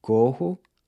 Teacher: corro, I run, which is pronounced with a closed O